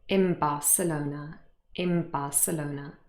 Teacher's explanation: The n changes into m. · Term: assimilation